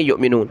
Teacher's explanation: حمزہ ساکنہ جھٹکا دیں گے